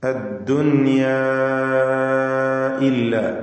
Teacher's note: നാലോ അഞ്ചോ ഹറക്കത്തിന്റെ അളവിൽ ദീർഘിപ്പിക്കൽ അനുവദനീയമാണ്. പദത്തിന്റെ അന്ത്യത്തിൽ ദീർഘാക്ഷരമായ അലിഫ് തൊട്ടടുത്ത പദത്തിന്റെ തുടക്കത്തിൽ ഹംസയും വന്നതാണ് ഇതിനുള്ള കാരണം. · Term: മദ് മുംഫസിൽ ജായിസ്